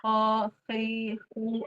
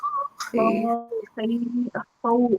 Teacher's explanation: Ho, hi, hu, ada nafas mengalir. Karena nafasnya mengalir berarti dia apa? Hams.